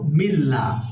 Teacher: মিল্লা, আল্লাহ শব্দটা এখানে বারিক করে পড়ব মিল্লা, কারণ আল্লাহ শব্দের পূর্বে জের আসছে, এই কারণে বারিক করে পড়ব। যদি আল্লাহ শব্দের পূর্বে জবর অথবা পেশ হতো তাহলে আমরা এটা ল পড়তাম, মোটা করে পড়তাম।